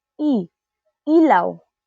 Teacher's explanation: Ito ay isang mataas at harapang patinig. Ibig sabihin kapag binibigkas natin ang e nasa harap ang dila at medyo nakataas.